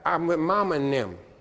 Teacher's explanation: It becomes an N, TH is an N, like I'm with mama and them